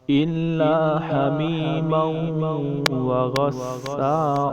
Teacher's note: ان لام کے اوپر تشدید ہے، الا لام ہم دو بار پڑھیں گے۔ آگے لام الا کو لمبا کریں گے، رفع مدہ ہے۔